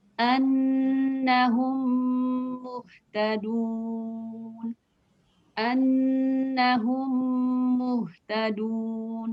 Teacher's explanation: Jadi apabila mim bertemu dengan mim, cara membacanya mim dengan mim pertama diidghamkan atau dimasukkan ke dalam mim kedua dengan tempo gunah yang dipanjangkan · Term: idgham mimi